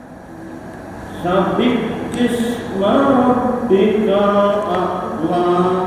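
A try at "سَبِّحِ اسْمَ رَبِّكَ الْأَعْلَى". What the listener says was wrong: Mun sabikis Mbah, lek sabikis nanti jatuhnya ke kaf. Sabihis saged. Sabihis nggih. Itu yang sabikis itu ya, nggak boleh. Harusnya sabihis.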